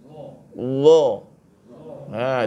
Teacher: Lidah kita ni dikeluarkan antara dua gigi tu bunyi dia dha. Dha. Jangan bunyi za.